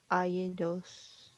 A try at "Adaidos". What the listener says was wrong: Adaidos. So it's that T right here. So that Adaidos.